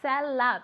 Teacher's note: I say cellar because I have an Australian accent and my vowels at the end of the words are stronger